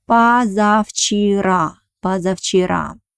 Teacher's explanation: Pay attention that the first vowel O I pronounce like A because it doesn't have an accent.